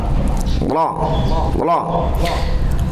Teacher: Tetapi ro di sini mufakhamah. Mufakhamah itu berarti tafkhim, artinya tebal.